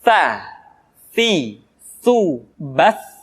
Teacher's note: Jadi yang tepat adalah ujung lidah disentuhkan dengan dinding dua gigi seri bagian atas.